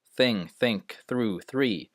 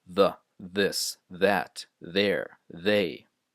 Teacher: Light TH, no vibration in the throat